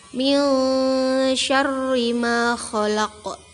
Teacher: Terdapat nun sukun bertemu huruf shin dan dibaca samar. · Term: ikhfa